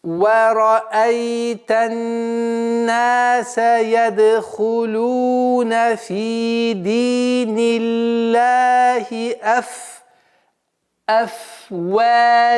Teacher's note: Вот удлинение после «вау» и «джа» они одинаковые, монотонные.